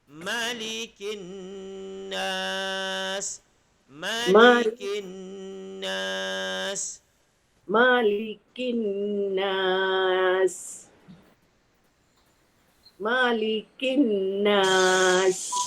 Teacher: Cuma yang membezakan Malik Yaumiddin mem panjang, Malikin nas mem pendek. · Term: Kat sini tidak ada mad